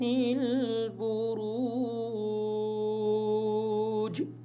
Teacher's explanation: بروج کی راہ کو پر کر کے پڑھیں گے